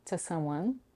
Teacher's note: To is reduced to t with a schwa